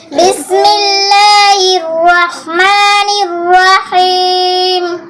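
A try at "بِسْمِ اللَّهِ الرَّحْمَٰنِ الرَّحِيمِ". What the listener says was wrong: একটু ওয়াহিম শোনা যায় রটা স্পষ্ট করে উচ্চারণ করতে হবে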